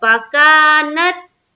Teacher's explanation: फकानत, फा को जल्द पढ़ेंगे, का में अलिफ मद्दा, फकानत, नून को ता में मिलाए, जज्म का कायदा है, ता में हमारी आवाज रुक जानी चाहिए